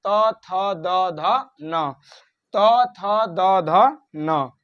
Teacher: त बोल रहे हैं तो त थ द ध न जीभ हमारे दांत पे टच कर रही है तो उच्चारण स्थान दंत। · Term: त वर्ग